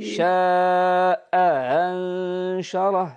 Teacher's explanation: ننطق بهمزتين احداهما محققه والاخرى مسهل بين بين